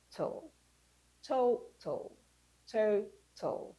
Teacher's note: Okay, so you have in total, for instance, the A is taken away, the last T and the L is brought together as in marriage.